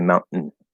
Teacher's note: Or you can say mountain with a syllabic consonant.